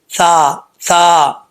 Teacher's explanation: سا زبان کی نوک اوپر والے دانتوں کے نچلے حصے سے لگے تو سا پڑھا جاتا ہے بغیر سیٹی کے